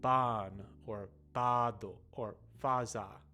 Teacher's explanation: when you're saying these words with a Japanese accent, you would use the sound ah